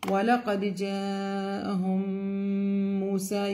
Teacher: You have to do the غُنَّة or the nasal sound two counts.